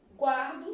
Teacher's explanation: Eu tenho que observar que a letra U é pronunciada.